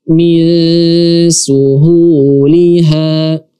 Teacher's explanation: Sin adalah huruf tipis, otomatis ikhfa-nya juga dibaca tipis.